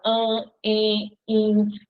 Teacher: As vogais no meio da palavra, diante de M e de N, vão ficar com o som nasal.